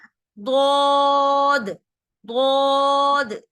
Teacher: जबान के मोटे किनारे ऊपर की 5 दारों को लगे।